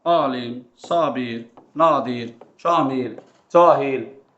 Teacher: A satin uzanmasına bir nəzər salaq. Sözün əvvəlində daha çox ahəng qanunu pozulan sözlərdə a uzanır.